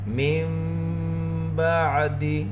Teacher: کرام بررہ من بعد، نون ساکن کے بعد با، یہاں پر اقلاب ہوگا، نون کی آواز کو میم سے بدل کر گنہ اور اخفا کے ساتھ پڑھیں گے